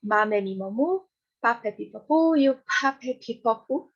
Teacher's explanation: Todos eles a gente produz com os lábios